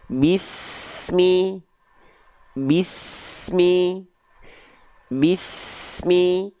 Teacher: Antara s dengan mi tidak boleh ada jeda hening. Bismillahi, tapi terus mengalir. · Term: sin sukun